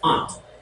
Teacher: So it's an N and a T without any vowels in between. Silent. They're both silent, so it's going to be aunt.